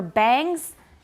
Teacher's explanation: a lot of people in taiwan don't say bangs they say bands